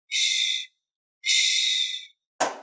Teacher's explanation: ch is an aspirated version of zh Just enhance the air puff a little bit